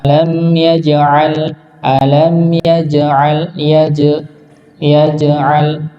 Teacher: Nah, jangan lupa ya. Huruf jimnya dipantulkan. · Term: qalqalah